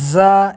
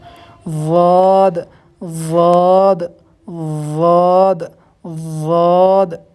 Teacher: ذال اور زا، ان کی آواز موٹی نہیں ہوگی، اور یہ جو ضاد ہے، ضاد، اس کی آواز تھوڑا موٹی کر کے نکالنی ہے۔ یہ کیسے نکلے گا کہ جو زبان کی جو کروٹ ہوتی ہے، یعنی سائیڈ کا جو حصہ ہوتا ہے، جب اس کو اوپر کے جو سائیڈ کی جو داڑیں ہیں، دانت ہیں سائیڈ کے، جب ان سے لگائیں گے تو ضاد نکلے گا، ضاد۔